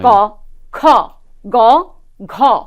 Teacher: আমি যখন ক উচ্চারণ করছি, খেয়াল করে দেখুন কণ্ঠ থেকে উচ্চারিত হচ্ছে, কিন্তু জিহ্বামূল স্পর্শ করে যাচ্ছে, জিহ্বামূল চাপ খাচ্ছে, মানে জিহ্বামূলে একটা বাধা প্রাপ্ত হচ্ছে। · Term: কণ্ঠমূলীয় ধ্বনি